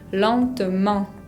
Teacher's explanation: En la palabra lentement, no se pronuncia la T final y tenemos una nasal, la E con N, la combinación.